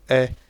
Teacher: हमारे जो होठ हैं वो वृत्त का रूप न लेकर किसका रूप ले रहे हैं फैलाव का इस कारण अवृत्तमुखी यानी वृत्त न होकर अवृत्तमुखी या इन्हें उदासीन स्वर कहा जाता है। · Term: अवृत मुखी